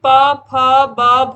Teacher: ये ओष्ठ ध्वनियां हैं, जिनको बोलने के लिए हमें होठों की आवश्यकता होती है